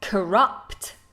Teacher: It's got that schwa instead of the vowel at the beginning.